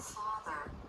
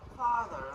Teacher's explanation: >> This vowel needs a lot of jaw drop. >> The tongue tip lightly touches behind the bottom front teeth and the back part of the tongue presses down a little bit. >> The lips are neutral, very relaxed.